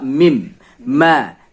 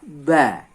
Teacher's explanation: ketika kita melafazkan huruf mim, itu yang kita pakai adalah bibir luar